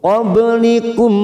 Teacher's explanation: ba sukun qalqalah sugro, kita pantulkan